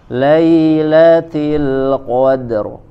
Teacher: Nah, ro-nya tebal kan, jelas.